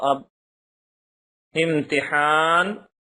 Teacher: جب ان پر جزم ہو تو ان کو پڑھتے وقت ان کے مخرج ٹکر کھا کر الگ ہو جاتے ہیں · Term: قلقلہ